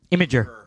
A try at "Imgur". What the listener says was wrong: IMGUR. But there's not. You're adding a syllable in there. That's not there.